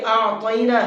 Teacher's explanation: حمزہ کو اس کی جگہ سے نکالنا ہے، عین کو اس کی جگہ سے نکالنا ہے۔ حمزہ منہ سے نکلتا ہے اور عین حلق سے نکالتا ہے، دونوں کے ساؤنڈ الگ الگ ہونے چاہیے۔